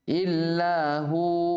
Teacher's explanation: Tapi ketika wasal tidak ada yang panjang. Ya, ketika waqaf dibaca dua harokat. Namun ketika wasal tidak dibaca panjang.